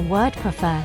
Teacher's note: The fur sound is stressed in the word prefer